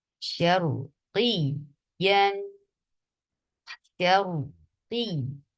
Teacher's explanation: جب قاف کو یا کے ساتھ ملایا جا رہا ہے یہاں نبر پلیس کیا جا رہا ہے تاکہ اس امکان کو ختم کر دیا جائے کہ سننے والا یہ سمجھے کہ مد ہے یا یہ لین نہیں، اس میں سے نہ کوئی مد ہے اور نہ لین بلکہ یہ تشدید والا لیٹر ہے یا تشدید ہے یا مشدد۔